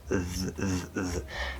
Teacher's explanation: you don't have to go between the teeth you can actually be right behind the teeth as long as you're super close